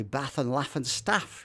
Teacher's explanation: I come from the Midlands, so I tend to have flat vowels. I tend to say bath and laugh and staff, but that's why people either book me or they don't book me because of the way I sound.